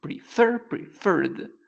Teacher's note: last letter so in this case the pronunciation is PR Fair the accent the stress is in the last syllable